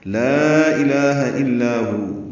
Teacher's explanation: لا الہ الا ہو، دیکھیں جیسے کلمے میں الفاظ ہم لام کو لمبا کرتے ہیں، یہ مد منفصل ہے، الف مدہ کے بعد حمزہ آنے کی وجہ سے. لا الہ، الہ میں لام کو 2 حرکات لمبا کرنا ہے.